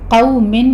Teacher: قوف کو پر پڑھتے ہوئے واولین ادا کریں گے، یعنی ہونٹوں کو ناتمام گول کرتے ہوئے آپ نے ادا کرنا ہے